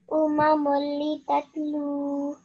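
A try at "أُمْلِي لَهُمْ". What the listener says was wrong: Excellent. Well done. Jazakallah for your help. That was very well read.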